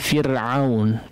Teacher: Fir'aun adalah kondisi huruf ra dibaca tipis, ya. Maka silahkan ditipiskan bacaan dari kata Fir'aun pada huruf ra-nya.